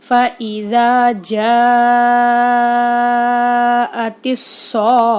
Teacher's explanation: இங்கே குண்டு தாள முடிஞ்சிருக்கு, அதனால் நம்ம ஹாவுடைய உச்சரிப்பில் நிறுத்தணும்.